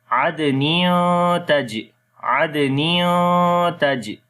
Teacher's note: After the tanween, the next letter is ta, which is one of from 15 ikhfa letters. So we make ikhfa here. We hide the sound of noon. · On the jim we make kalqala again.